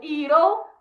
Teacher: O it, que é com o will contraído, que vira it'll, que é o Tzinho ali, ele vira um R no meio das vogais.